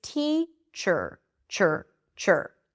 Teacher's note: I'm moving from the ch sound to the r immediately.